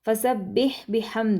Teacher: اب دیکھیں یہ جو با ہے فسبح میں، با کو سختی سے پڑھنا ہے تشدید کی وجہ سے، فسبح بحمد، یہ والا جو ہا ہے یہ حلق سے ادا ہوگا، یہ سینے سے ادا نہیں ہوگا · با کو سختی سے پڑھنا ہے تشدید کی وجہ سے، فسبح بحمد، یہ والا جو ہا ہے یہ حلق سے ادا ہوگا، یہ سینے سے ادا نہیں ہوگا، ٹھیک ہے، اس کا آپ نے خاص خیال رکھنا ہے۔